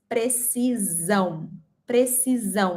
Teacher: In Portuguese, we have one S between two vowels and we pronounce precisão. Precisão with a Z sound